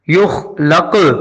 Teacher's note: اس کے بعد لم، لم کے بعد ہے یخلق، یخ میں خا کو حلق میں خراج کے ساتھ پڑھنا ہوگا، یہ خا کو ادا کرتے ہوئے خراج لازمی آتی ہے، یخ، یخ کے بعد لام کا زبر لق، نقطے والا کاف ہے، موٹا پڑھنا ہے سختی کے ساتھ اور کلکلا بھی کرنا ہے، کیونکہ قاف ان 5 حروف میں شامل ہے جن پہ کلکلا ہوتا ہے۔